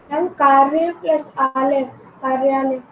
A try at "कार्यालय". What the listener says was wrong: कार्यालय, very good.